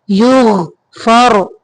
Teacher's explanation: غین کو قلقلہ نہیں کرنا، یوغ نہیں پڑھیں گے